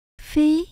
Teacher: Mình đọc là phi, mình lên cao nhé. Phi, âm số 2 mình xuống thấp giọng lại, nish.